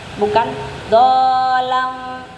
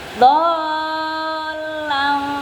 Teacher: Tidak didengungkan, tidak dipanjangkan. Dia sesuai tempo tapi jelas masuk ke lamnya. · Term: lam tasydidnya